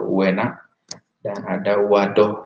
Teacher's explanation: Sonoritasnya ada pada yang kedua ya. Kalau dilihat dari tinggi rendah berarti U lebih tinggi, E lebih rendah, dan untuk wadoh U juga lebih tinggi, sedangkan A lebih rendah, sehingga disebut dengan diftong turun.